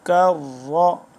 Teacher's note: کاف کش والا باریک ہے اور را موٹا ہے